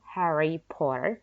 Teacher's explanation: Harry-nya jelas karena diikuti oleh O gitu ya, diikuti vowels